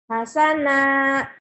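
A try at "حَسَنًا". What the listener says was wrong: Enggak, hasanan. Hasanan. Jangan ditahan. hasana, hasanan.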